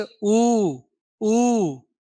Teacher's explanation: जिस स्वर के उच्चारण समय होठ गोलाकार हो गोलाकार हो उसको हम क्या बोलेंगे जी वृत्त मुखी कहेंगे